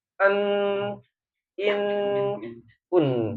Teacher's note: suaranya pertengahan berhenti dengan mengalir ya namanya bainiah. Jadi suaranya ada sedikit an in un ya.